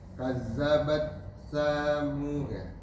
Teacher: Kazzabat seperti membaca za. Keluarkan lidahnya.